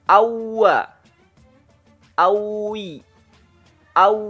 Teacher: kedua bibir di monyong kan kedepan dengan membuka celah sedikit keluar darinya huruf wa